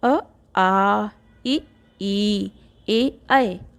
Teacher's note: जिन स्वरों के उच्चारण में होठों की स्थिति गोलाकार नहीं रहती है उन्हें आगोली या अवृत्तमुखी स्वर कहते हैं।